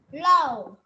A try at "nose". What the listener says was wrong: Nose chứ không phải low ha. N. N giống như là no, no căng bụng á. No nê á. Thì là âm N, không phải âm L ha. N. No. Nose.